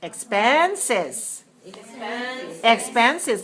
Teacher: 3 syllables, stress the second.